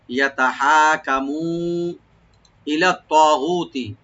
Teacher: দেবো, আর হাত একালিফ টান আছে, ইয়াতাহা কামু, কাপটাকে ওপেন রাখবেন, মু এখানে আমরা তিন আলিফ করে টানবো, মাধ্যে মুনফাসিল , ইয়াতাহাকামু ইলা তাগুতি, ইলা তাগুতি, ই হামজাকে রাইট দিবেন, লাম